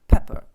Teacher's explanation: Pepper сіль та перець і от знову це р в кінці ненаголошена позиція воно тільки е читається як Pepper р не чується